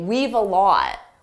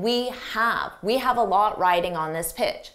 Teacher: notice when I said the sentence fast I did not contract we have I didn't say weave a lot we've a lot riding on